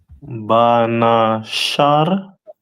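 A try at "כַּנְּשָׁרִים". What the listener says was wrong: That first letter is a Ka. So Kanasharium, right?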